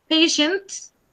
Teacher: you have to make the little sound T at the end